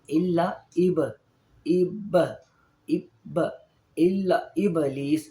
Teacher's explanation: جو با ہے اس پہ قلقلہ ہوگا کیونکہ با کے اوپر جزم ہے، وہ ساکن ہے، ساکن حالت میں ہے اور حروف قلقلہ میں سے ہے.